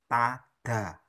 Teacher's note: Ta, ujung lidah ketemu gigi atas. Da, ujung lidah ketemu gigi atas.